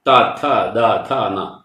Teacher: നാവിന്റെ തലപ്പ് ഉൾത്തൊണ്ണിനോട് പറ്റിച്ചു വെച്ച ശേഷം ഉച്ചരിക്കുന്നതാണ്